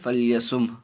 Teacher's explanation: ہاں کی آواز آئے گی، حرکت کی نہیں